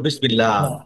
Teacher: জের থাকলে হবে পাতলা